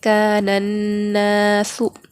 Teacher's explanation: نون سے نون کو ملا کر پڑھیں گے، یہاں پر الف اور لام کو نہیں پڑھا جائے گا، نون سے ملا کر پڑھیں گے، کانناس۔ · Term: حروف شمسی